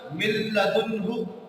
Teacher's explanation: لام اور را میں ملا دیا جائے گا اور نون کی آواز بالکل باقی نہیں رہے گی اور وہاں غنہ بھی نہیں کیا جائے گا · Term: ادغام بلا غنہ